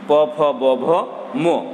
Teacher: ওষ্ঠধ্বনি উচ্চারণ করতে গেলে মানুষের নিচ এবং উপরের 2টা ঠোঁটই ব্যবহার করতে হয়। এই 2টা ঠোঁটের মাধ্যমে যে ধ্বনিগুলো উচ্চারণ করতে হয়, সেই ধ্বনিগুলোকে আমরা বলি ওষ্ঠধ্বনি।